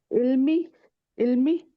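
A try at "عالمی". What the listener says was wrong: नहीं, इल्मी की जगह अगर होता तो अलिफ नहीं होता। आलमी।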